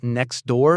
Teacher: The T just vanishes to make it flow better.